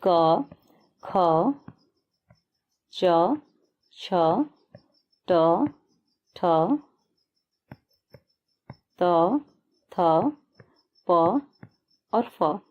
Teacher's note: जिनका उच्चारण करने में गले में कंपन नहीं होता है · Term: अघोष